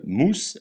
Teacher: S se prononce ce comme dans serpent jamais ze comme dans oiseau